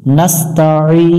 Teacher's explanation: আইন ইয়াজের ই, আইন অক্ষর একটু গলার মধ্য থেকে চেপে উচ্চারণ করতে হবে। জেরের বামে ইয়া সেকেন্ড, এক আলিফ টানতে হবে।